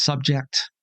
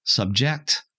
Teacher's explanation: when we're using a word as a noun we put the accent on the first syllable and when we're using it as a verb we put the accent on the second syllable